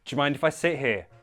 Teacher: to make it more natural sounding, combine do you to sound like j.